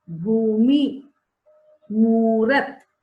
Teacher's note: जहां पर बड़ा ऊ की मात्रा या दीर्घ ऊ की मात्रा लग गया तो हमने जो साउंड है उसको थोड़ा लंबा किया